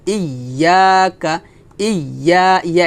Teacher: হামজা ইয়াজের ইয়া আলিফ জবর ইয়া, ইয়া কাফ জবর কা, ইয়াকা, ইয়া, ইয়া এক লিফ টান হবে, কাফ জবর কা এখানে টান হবে না